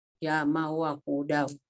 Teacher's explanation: Karena tanwin patah dimasukkan ke dalam huruf wawu, dibacanya pakai guna. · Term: idgham biguna